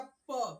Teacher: ऐसे व्यंजन जिनको बोलते समय हमारे दोनों होठ आपस में एक बार चिपक जाए और एक बार खुल जाए। जैसे देखिए, बोलिएगा प, प बोलते समय हमारी जीभ हमारे जो दांत है, दांत से ऊपर जो ये होठ है, ये दोनों होठ एक बार ऐसे चिपक रहा है फिर खुल रहा है, चिपक रहा है खुल रहा है। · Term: ओष्ठ व्यंजन